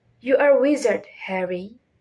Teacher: Start higher and let your voice naturally go lower at the end.